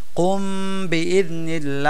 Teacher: ইখফা বলতে গুন্না করে পড়বো নাকের মধ্যে নিয়ে কুমনিল তো এটাকে ইখফায়ে শাফাবি বলে গেল শাফাবির আলোচনা শেষ এবার